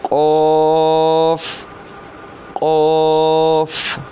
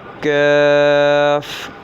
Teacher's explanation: پیچھے جو پڑھا ہے وہ قاف ہے، اس کو پڑ یعنی کہ موٹا پڑھیں گے، اور یہ جو ہے یہ ہے کاف، اس کو موٹا نہیں پڑھیں گے کیونکہ یہ زبان کی جڑ اور تالوں کے سخت حصے سے ادا ہوتا ہے.